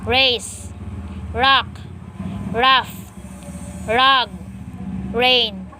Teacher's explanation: the alveolar semi vowel